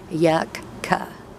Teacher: I try when I pronounce it to put the K at the end of the first syllable and a k at the beginning of the second